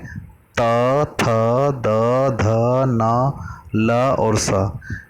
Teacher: ये वर्ण जब आप बोलेंगे तो आपकी जिह्वा आपके दांतों को स्पर्श करती है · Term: दंत्य वर्ण